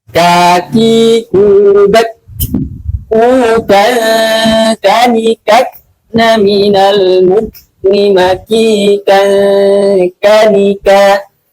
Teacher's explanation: Sama di pangkal lidah, akan tetapi dia lebih maju sedikit dari makhraj huruf qaf ya, sedikit. Ka, seperti ya, maju sedikit, lebih maju sedikit bagian seperti itu. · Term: huruf kaf